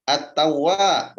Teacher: Alif lam syamsiyah. At-tawwab, wa-nya panjang 2 harokat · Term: Mad tabi'i